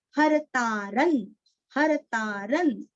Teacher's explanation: र के ऊपर अनुस्वार का उच्चारण आधा न